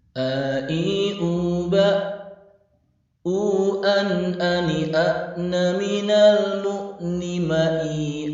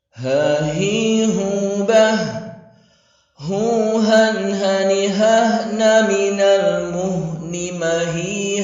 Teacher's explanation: Hamzah tidak mengalirkan nafas, adapun H seraya mengalirkan nafas.